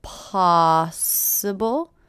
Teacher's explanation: possible first syllable is stress